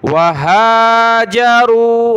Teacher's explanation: ये चश्मे वाली हा कहलाती है, इसको हमने गले से नहीं निकालना। दूसरी हा होती है, उसको गले से निकालते हैं हा करके, ये हा है, ठीक है।